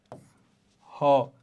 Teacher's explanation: তো এইরকম কণ্ঠনালীয় ধ্বনি একটাই, সেটা হচ্ছে কি হ। তাহলে আমরা জিহ্বা মূল থেকেও কিন্তু আরো নিচে চলে যাচ্ছি, কণ্ঠে চলে যাচ্ছি যখন হ উচ্চারণ করছি, তো এই জন্য এটাকে বলা হয় কি কণ্ঠনালীয় ধ্বনি।